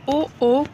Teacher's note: कंठ से आवाज निकलती है और साथ ही मुंह की आकृति बनती है। फिर है कि इनमें से ओ का उच्चारण स्थल तो कंठोष् है